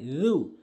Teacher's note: জু বলতে হবে জু, জিব্বার আগা দাঁতের আগা